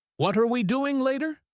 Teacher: The three words what are we can blend together into a smooth sound. The strong word here is doing. That is the action. That is where the energy goes. · The what are we is just the setup. It is weak. It is fast. It is quiet.